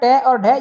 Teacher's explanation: ट और ढ ये आपका मूर्धन्य वर्ण से होता है। मूर्धन्य वाला होता है।